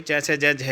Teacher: मुख का जो है दोस्तों ऊपर वाली जो छत होती है उसका पिछला वाला भाग होता है तालु, ठीक है। तो इसमें जो च छ ज झ ये आपके होते हैं, ये तालु से बोले जाते हैं भाई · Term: तालु वाला व्यंजन